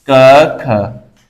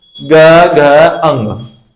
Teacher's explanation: क ख कम वाइब्रेशन लगी, ग घ अंग इनमें ज्यादा वाइब्रेशन लगती है, यानी इनमें कंपनता ज्यादा होती है दोस्तों।